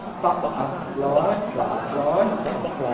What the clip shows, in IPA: ˈbʌʔəflɒɪ